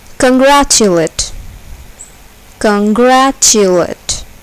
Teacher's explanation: the second syllable is accented